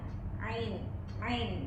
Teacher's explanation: Bainyiah itu pertengahan. Suara antara tertahan dan mengalir. Jadi ee dia itu sifatnya tengah-tengah antara tertahan dan mengalir.